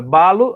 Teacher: E o LL aqui não tem som de lhá. Tem som de lá mesmo.